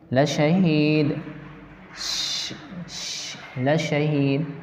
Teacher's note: پشت زبان قریب سرا زبان تالو سے مل کر شین ادا ہوتا ہے